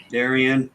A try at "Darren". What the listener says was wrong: My name's Darren, not Darian. You're adding an extra syllable in my name. You're calling me Darian, and my name's Darren.